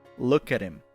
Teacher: the H drops in him